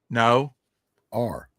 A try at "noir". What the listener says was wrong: But now hit it softer. Noir.